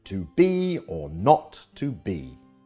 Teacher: This two-syllable foot is like a reverse trochee, so the first syllable is unstressed and the second is stressed, as in to be or not to be. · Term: iamb